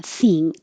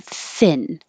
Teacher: you're also changing the vowel from e, which is very high position, thing, to thin, where your tongue's in a more middle, lower position, thin, and the tongue comes up in the front.